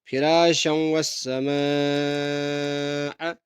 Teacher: میم پر کھینچیں گے کیونکہ یہاں پہ مد واجب ہے، یہاں پہ زیادہ کھینچنا ہے